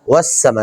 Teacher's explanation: سین کو پڑھتے ہوئے سیٹی کی آواز آنی چاہیے جی. والسماء، والسماء نہیں پڑھ دینا جی.